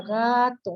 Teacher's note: Si acaso ga se oye un poquito más fuerte, to, un poco más elevado.